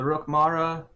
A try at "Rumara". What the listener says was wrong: There's no K in Rumara, just as a reminder.